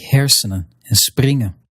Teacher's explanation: when you see the spelling en at the end of a word, then that n is generally going to be silent